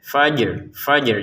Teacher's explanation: Untuk kata alfajr di sini jimnya dipantulkan. Kemudian setelah itu diiringi langsung dengan rnya ya. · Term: unsur bergetarnya ro